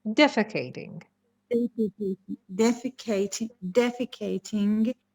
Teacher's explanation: the stresses on the first syllable